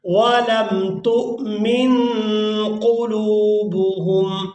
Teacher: تا کو حمزہ ساکن کے ساتھ ملائیں گے تو جھٹکے کے ساتھ ادا کریں گے